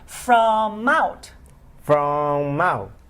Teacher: It's almost like the word is mount instead of from out. Put the M in front of the O.